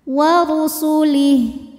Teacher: berbaris fathah panjang maka dibaca panjang lamnya dua harakat Billahi warulih huruf ro dibunyikan secara tafkhim karena ro berbaris damah maka dibacanya tebal